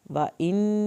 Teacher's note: نون کی شد پہ دیر لگائیں گے الف کے برابر یا ساکن کو کھینچیں گے